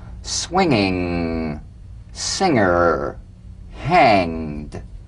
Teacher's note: practice the medial ng the ng in the middle of the word with no drumbeat